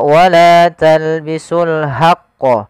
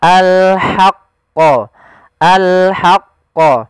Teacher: dia ha posisinya adalah kita bagaimana menyempurnakan huruf ha kecil yaitu kita mengeluarkan dari tengah tenggorokan kita ha disertai dengan nafas